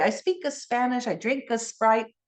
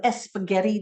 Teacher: there's no s Blends in the beginning of words